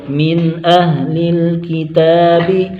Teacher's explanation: من پر اظہار ہوگا، اظہار حلقی، نون کو ظاہر کر کے پڑھیں گے، غنہ نہیں کریں گے